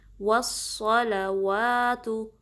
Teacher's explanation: सौद जो है ना हैवी लेटर्स में से है, पुर हरूफ में से है, तो इसमें आपका क्या होगा कि जो ज़ुबान की बैक पोर्शन है उसको आपने रेस करना है, उठाना है, ठीक है, ताकि ये हैवी अंदाज में अदा हो। वस्सलवातु, सौद पे भी तशदीद है, थोड़ा टाइम देंगे, ठीक है।